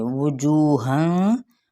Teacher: होंठों की ना तमाम गुलाई के साथ वाव की पेश को अदा करेंगे। जू पे वाव मद्दा।